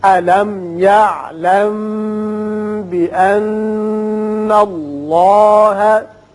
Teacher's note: یا علم میم ساکن کے بعد چونکہ با آ گیا یہاں اخفاء شفوی ہوگا